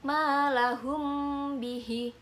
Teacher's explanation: cara membacanya dengan mendengungkan atau menambahkan guna dengan panjang 2-3 harokat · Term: Ikhfa Syafawi, ikhfa syafawi